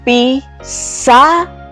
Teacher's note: darnos cuenta que la sílaba que suena más fuerte es la sílaba sa · La sílaba pi y la sílaba ra son sílabas átonas, porque no se le oye la fuerza de voz. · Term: sílaba tónica